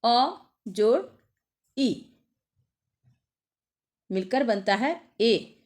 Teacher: अ का उच्चारण स्थान कंठ है और ई का उच्चारण स्थान तालू है इसलिए इन दोनों के योग से ए बना इसलिए उसका उच्चारण